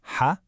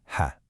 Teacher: the difference between the deep, raspy ha and the lighter, airy ha